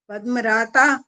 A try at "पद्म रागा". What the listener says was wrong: रागा। ता नहीं है, गा है, ग से गाय। पद्म रागा।